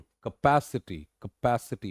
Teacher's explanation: कैपेसिटी, कैपेसिटी, पैस पे आके जोर आ जाता है